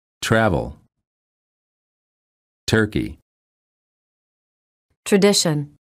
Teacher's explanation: say CH as in chain but just make the tip of the tongue a bit more tense when it touches the gum Ridge and focus on creating a stop of air words for practice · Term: almost CH sound